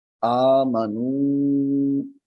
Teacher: الف کے اوپر جو کھڑی حرکت ہے یہ مد اصلی ہے، یعنی ایک الف کے برابر لمبی ہوگی.